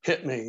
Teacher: in english we tend to chop off those final consonants and put a glottal stop there